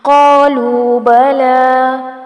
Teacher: قاف کو یہاں پر موٹا پڑھا جائے گا، لو کو تھوڑا سا کھینچیں گے. بلا، اس کو بھی کھینچ کے پڑھیں گے، کھڑی زبر آ رہی ہے.